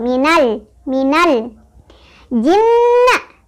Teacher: bertasdid dihukumi dengan Gun nah sebabnya karena ada huruf nun bertasdid huruf nun bertasdid masuk huruf gunah dibacanya didengungkan Ya sambil ditahan